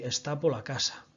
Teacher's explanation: Piérdese el sonido de la R y xenérase una única palabra